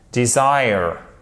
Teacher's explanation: le e il est prononcé comme un i court